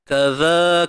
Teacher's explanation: Huruf zal keluarkan sedikit hujung lidah.